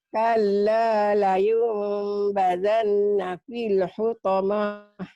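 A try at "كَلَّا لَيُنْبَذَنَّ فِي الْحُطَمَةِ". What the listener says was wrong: Hutamahnya pendek. Kalla layunbazanna fil hutamah. Hutamah nggak ada panjang.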